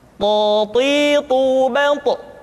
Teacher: dalam posisi sukun, to memiliki sifat qalqalah, sehingga suaranya mesti terdengar mantul